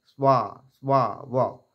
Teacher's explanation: স্বা সাহা বলবো না, স্বা স্বা ওয়া, দাঁত ঠোঁটে এসে লাগবে।